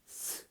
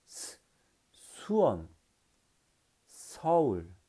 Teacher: 마찰음이기 때문에 살짝 미세하게 틈을 만들어 놓고 발음합니다.